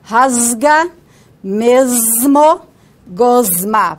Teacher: nós vozeamos porque o que vem em seguida é vozeado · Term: vozeamento da fricativa